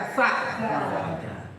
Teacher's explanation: ujung lidah nempel dengan ujung gigi depan atas